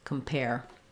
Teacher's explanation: we're saving our clear vowel for the stress syllable pair, and we're having a reduced vowel in the first syllable